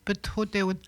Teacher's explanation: On n'entend pas le A, mais le H, on l'entend bien.